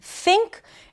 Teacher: This is the voiceless th as in think.